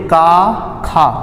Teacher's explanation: नाक में वायु प्रवेश नहीं कर रहा है इसको बोलते समय नाक एकदम से ब्लॉक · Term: अघोष वर्ण